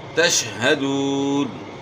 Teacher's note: ہا کو گلے کے آخر سے ادا کرنا ہے